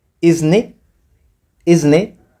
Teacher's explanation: Yani ile te kama unaiminya kidogo, alafu ile ne na ai unazifanyia liaison.